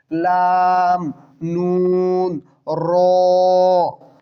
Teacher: দেখুন নুন, লাম, এগুলো সবগুলো জিহ্বার আগা এবং উপরের তালুর একবার আগার সাথে লাগতেছে।